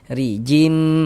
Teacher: Mim marijim, huruf ro memiliki harokat kasroh, baris miring di bawah namanya harokat kasroh. Maka huruf ro dibaca tipis, baca tarkik.